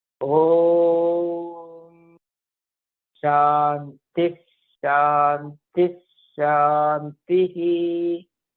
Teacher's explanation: Visarga will not be there, but Shakara will be repeated twice.